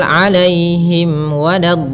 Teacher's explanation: Kemudian pada lafal alaihim wad ada mim mati bertemu wau. Ini merupakan bacaan izhar yang di mana bacaannya yaitu suara mimnya harus jelas.